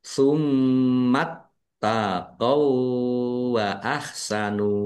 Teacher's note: mim tasdid bacaan ghunah dibaca mendengung ditahan biar tampak mendengungnya ada tasdid nya dibaca dobel, ditekan dan ditahan biar tampak dobelnya. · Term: bacaan gunnah